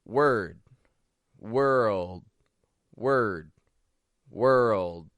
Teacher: Well, when we say word, first of all, we're using a W, then we're using a schwa R, and then a stop D, word. Now, when I say world, now we are still hearing a W and a schwa R, but then after that, we aren't going straight from the R to the L. We're not going straight world, but we're making it an world. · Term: dark L sound